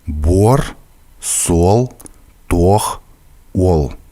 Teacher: если в русском языке начальный звук — это краткий «у», то здесь он произносится как отчетливый «у». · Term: Дифтонг «uo»